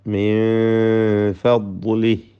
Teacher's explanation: തഫ്ഖീം കൊടുത്ത് തടിപ്പിക്കണം ദ്വാദിനെ. ദ്വാദ് അതിൻ്റെ മഖ്റജിൽ നിന്ന്, നാവിൻ്റെ അരുവിൽ നിന്ന് മേലെ അണപ്പല്ലിനോട് ചേർത്ത് ഇസ്തിത്വാല എന്ന സിഫത്തുള്ള അക്ഷരമാണത്